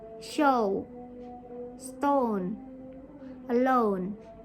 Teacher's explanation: your mouth will start on the position of the earth sound and then close a little and become more rounded as you finish on the position of the o or u sound